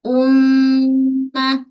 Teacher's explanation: Kemudian mim huruf bibir. Suara juga akan naik ke rongga hidung sebab mim ada sifat ghunnah. Kat sini wajib ghunnah.